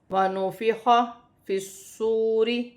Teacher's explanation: خا حروف حلقی میں سے ہے، حلق سے ادا ہوگا، صاد مشدد ہے، اپنے سے پہلے حرف کی حرکت کے ساتھ ملا کر پڑھا جائے گا۔ · واو ساکن سے پہلے پیش ہے تو واو مدہ بنے گی، اسے ایک الف کی مقدار کھینچ کر پڑھا جائے گا۔